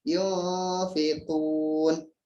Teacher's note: Diusahakan jangan sampai jelas ya, karena cara baca ikfa itu samar ya. Jadi ketika mau baca ikfa itu lidah kita sudah siap-siap ke huruf yang setelahnya, ke huruf fa gitu.